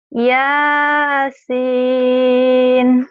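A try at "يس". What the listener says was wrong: jangan satu alif. Yasin, jangan kepanjangan kan satu alif.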